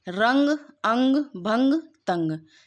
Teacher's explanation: इसका उच्चारण करते समय वायु नाक से ही निकलती है। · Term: अनुस्वार